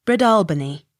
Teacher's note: Accent on second syllable.